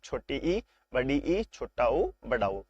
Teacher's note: उच्चारण में सबसे कम मुख द्वार खुले उनको क्या कहते हैं? उनको कहते हैं संवृत स्वर।